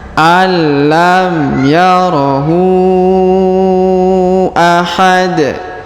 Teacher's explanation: huruf hu dipanjangkan lima harakat karena di sini terdapat tanda bacaan panjang lima harakat ya terdapat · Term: panjang 5 harokat